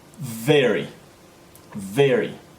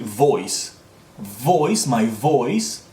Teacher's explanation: the V sound does not involve my top lip at all it's my top teeth and my bottom lip